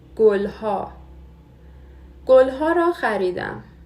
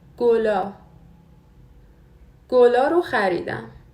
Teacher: Ha is the formal form. In the colloquial form, after consonants, the H drops. So only a gets pronounced.